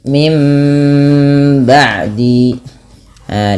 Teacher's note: bunyi suara Nun yang awalnya Min diganti dengan huruf mim